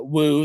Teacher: So if the accent uh starts uh high and goes low on a syllable like woo uh and then another uh woo that starts low and goes high